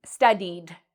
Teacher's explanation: studied ends in this E sound. So we actually would pronounce ed like a D sound